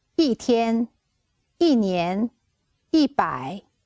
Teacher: When 一 is used before other 3 tones, it's pronounced as a fourth tone.